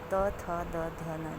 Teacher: त वर्ग त थ द ध न, देखिए आप ऊपर के दांत से जीभ सट रहा है